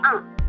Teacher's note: The vowel of A has the characteristic the front of the tongue is raised to just below the half open position. Lips are naturally open. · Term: open vowel